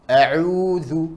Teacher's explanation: Kelihatan suaranya tersebut ketika lewat hidung dan tidak. Kesalahannya ain jangan lewat hidung.